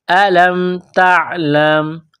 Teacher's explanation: لام کو میم کے ساتھ پلس کرنا ہے، تا کو باریک کرنا ہے، عین کے ساتھ ملانا ہے